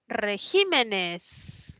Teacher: Que tiene la mayor fuerza de voz en la I, es esdrújula, colocó tilde.